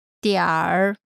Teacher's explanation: in North China, people tend to put an ER sound after the final syllable of many words.